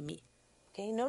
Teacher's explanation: Agora, que tal usarmos a mesma labial para fazer o som do M? Note que não há explosão alguma. Seguramos os lábios juntos e prolongamos o som.